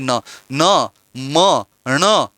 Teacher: आप बोलिए न, म, ण, ऐसा बोलेंगे तो आपके नाक के अंदर भी गतिविधि होगी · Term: अनुनासिक व्यंजन